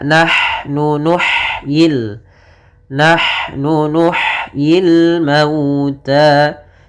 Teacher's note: Pada lafal nahnu di sini ha-nya sifat hamasnya jelas